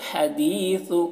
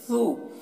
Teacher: حدیث، یہ ہا ہے ہوا کے ساتھ میں نکلتی ہے، حدیث، یہ ثا ہے تو سو نہیں بولنا، سین کی آواز میں نہیں بولنا